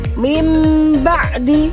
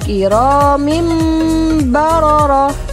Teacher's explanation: Nah, di sini ada huruf nun bertemu dengan huruf ba. Huruf nun sukunnya itu berubah menjadi mim. Mim ba'di. Meskipun tulisannya min ba'di, tapi membacanya menjadi nun sukunnya berubah menjadi mim. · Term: iklab